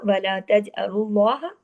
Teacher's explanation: अगली पर आइए, वला तजअलुल्लाह तज। अब देखिए तज में जीम पे कलकला होगा